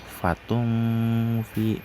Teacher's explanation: disamarkan seperti ingin menyebutkan fa. Fatung fi di situ terdapat hukum matobi'i dinillahi, yang di situ terdapat huruf ikhfa in kuntum.